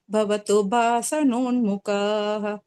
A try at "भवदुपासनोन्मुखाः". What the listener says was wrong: भवदू அது பவதூன்னு கால்ல விழுது. थ भ அதெல்லாம் கொஞ்சம் பாத்துங்க, பாக்கி எல்லாம் பெர்ஃபெக்ட்.